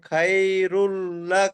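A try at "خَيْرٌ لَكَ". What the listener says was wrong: খাইরুল না নেই খয়রুল এখানে সাই যদি আপনি পড়েন তাহলে ভুল হবে খয় পড়তে হবে খয়রুল লাকা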